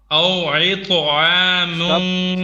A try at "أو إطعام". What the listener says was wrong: أو إي. This is ألف or همزة, not عين. أو إطعام.